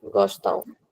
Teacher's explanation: This is am, but it is pronounced as ao. Nasal sound. Be it European or Brazilian, the pronunciation is ao.